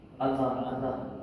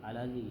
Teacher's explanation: pertemuan huruf lam ta'rif dengan lam, maka di situ kita baca secara idgham